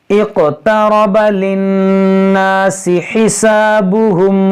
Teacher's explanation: यहाँ हमज़ा साकिना है, इसमें झटका होगा। यहाँ पर या मद्दा है।